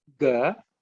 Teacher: Then ga, ug plus a, which is the third letter in the ka varga, not aspirated